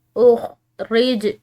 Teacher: جیم حروف قلقلہ میں سے، ٹھیک ہے، تو اس کو بھی ہلا کر ادا کرنا ہے